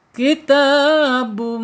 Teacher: Ketika ada tanwin menghadapi huruf mim ya maka secara hukum tajwid bacaannya idgham bigunna. Idgham itu melebur ya.